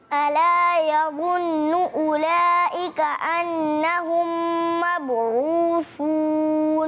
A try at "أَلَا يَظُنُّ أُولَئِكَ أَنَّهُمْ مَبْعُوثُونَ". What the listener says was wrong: لیکن نون کے اوپر ہم نے کیا تجدید ہے, یظن اولئک پہ مد آ گیا.